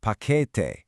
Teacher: For paquete, you want to put the emphasis right in the middle